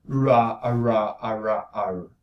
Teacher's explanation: in the retroflex the place of articulation is is behind so it's more posterior so that gives you a larger resonance cavity